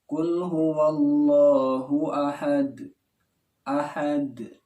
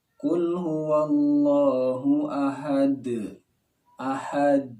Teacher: yang namanya qalqalah adalah pantulan. Jadi pantulan langsung, bukan suara tambahan. Banyak ketika seorang itu membaca bukan pantulan, tapi suara tambahan.